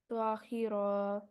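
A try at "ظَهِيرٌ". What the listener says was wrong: الف نہیں ہے آخر میں، اسٹاپ کر کے ظہیر پڑھیں گے، ٹھیک ہے، ظہیر، آگے یہ دو پیش ہٹا دیں گے اس کے اوپر سے، اور یہ را کو ساکت کے ساتھ پڑھیں گے، ظہیر، اوکے۔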